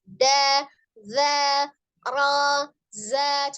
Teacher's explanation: Zanya ujung lidahnya ada di ujung gigi seri bagian atas